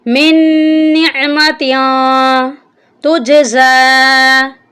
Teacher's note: یہاں پر نون مشدد ہے، نون پر ہم غنہ کریں گے اور جو تا ہے اس کے اوپر اخفا کریں گے، تا پر تنوین کا اخفا ہوگا.